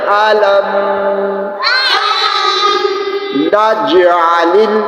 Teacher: جیم کے اوپر ساکن ہے، اس پر قلقلہ کریں گے اور قلقلہ نہایت کمزور ہوگا